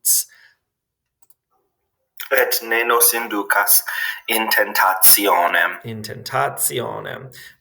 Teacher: in classic or in ecclesiastical pronunciation, it's going to become a TS sound